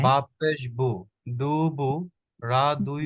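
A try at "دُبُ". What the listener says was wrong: দুবু টানা যাবে না, টানা একটু টোন চলে আসছে আপনার, দুবু এরকম হচ্ছে। দুবু হলে দু একটু টান হয়ে যাচ্ছে, দুবু।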